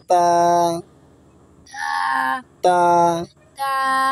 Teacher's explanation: জিভের আগার সামনে উপরে দুই দাঁতে গোড়ার সঙ্গে লাগে